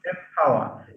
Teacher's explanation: The p of power is bilabial, so it's easier to have the same place of articulation. So by changing the n sound to m, we get two bilabials instead of an alveolar followed by a bilabial. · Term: assimilation